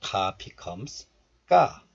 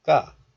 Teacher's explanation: when this 사이시옷 is followed by the first consonant 기역, then this first consonant becomes tensed. So this is pronounced like 귀가, but also 귓가 is okay. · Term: fortis